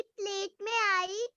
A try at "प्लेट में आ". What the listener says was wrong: आई नहीं बेटा एक मिनट, आपने बोला प्लेट में आई, आ के पीछे ई तो है ही नहीं, तो आई तो होगा ही नहीं, केवल आ होगा, ठीक है?